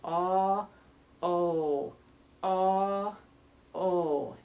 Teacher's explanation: So aw, not so rounded, to O, very rounded. Aw, O, aw, O, nice and long.